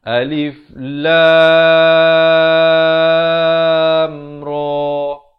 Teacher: Jangan ada dengung di antara lam dan ra.